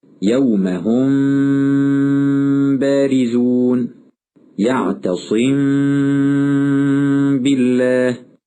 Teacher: بإطالة الغنة حال إخفاء الميم الساكنة عن حركتين